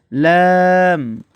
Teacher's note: জিহবার আগার কিনারা সামনের সামনের উপরে দাঁতের মাড়ির সঙ্গে লাগাইয়া